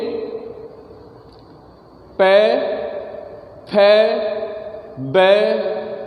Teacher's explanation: इनको बोलते समय आपके दोनों होठ मिलेंगे। पे, फे, बे, दोनों होठ साथ में मिलने से ध्वनि बाहर निकलती है, तो ये ओष्ठ कहलाते हैं।